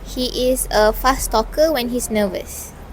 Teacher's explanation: in the word fast where the t sound was omitted